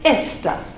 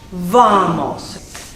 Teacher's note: In Spanish, for the stressing of where the stress goes, where the weight goes, it goes onto the penultimate syllable.